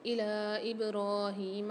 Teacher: لام کے اوپر کھڑا زبر مد ہے، 3 سے 4 الف کی مقدار کھینچیں گے